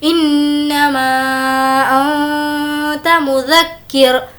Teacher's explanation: نون پر تشدید غنہ کریں گے اور اس کو کھینچ کر پڑھیں گے